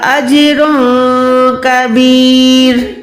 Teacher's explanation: کبیر، ٹھیک ہے، جیم ساکن؛ آپ کو قلقل کے حروف ضرور یاد ہوں : قاف، جم، دال، پانچ حروف ہیں۔ جب سکن کا یہ نشان جیم کے ساتھ ظاہر ہوتا ہے تو ہم آواز کو اچھالتے ہیں